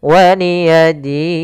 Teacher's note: Maka waliyadin di sini kita boleh memanjangkan dua harakat atau empat harakat ataupun enam harakat